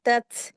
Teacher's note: जब भी ता को ता में मिलाएंगे तो हल्की सी हमस की आवाज आती है